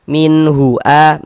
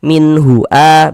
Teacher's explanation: Kemudian tidak didengungkan, jadi baca pendek saja. Min hua, jangan dibaca min dipanjangkan begitu, jangan, pendek saja. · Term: izhar halqi